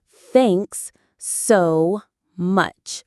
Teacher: The stress is on thanks and much.